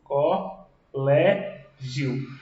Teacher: Vejam, a sílaba tônica é a penúltima. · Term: paroxítona